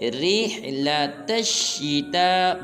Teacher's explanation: تا کو لمبا کریں گے کیونکہ اس کے اوپر مد ہے